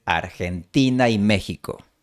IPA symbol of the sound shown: aj